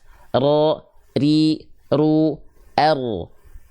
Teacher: huruf ro dilafalkan dari punggung lidah · Jadi getarannya sedikit, tapi walaupun sedikit tetap tegas, lugas dan jelas. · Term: takrir